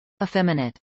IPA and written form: iːˈfɛmɪnət (effeminate)